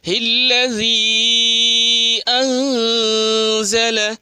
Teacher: مد منفصل تین الف کھینچ کے پڑھیں گے